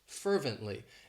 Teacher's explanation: grocery store the next adverb is one of my favorites fervently it has three syllables and the stress is on that first syllable